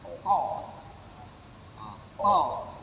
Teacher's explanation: Dan ada satu sifat ko, isti'la. Berarti waktu kita melafazkannya, lidah kita agak terangkat.